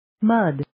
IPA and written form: məd (Mud)